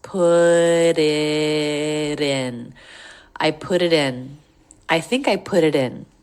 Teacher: We have linking ending consonant to beginning vowel, 2 in a row here that make flap T's.